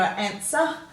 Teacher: you've got the er on the end quite often we give that a schwa sound